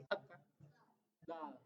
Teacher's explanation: Dal itu di gigi seri.